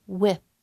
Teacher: And now with, with my tongue will be between my teeth.